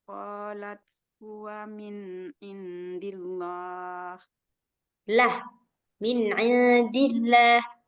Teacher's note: kalau ada kalimat Allah kemudian sebelum kalimat Allah ada huruf berbaris kasrah atau berbaris bawah maka Allahnya dibaca tipis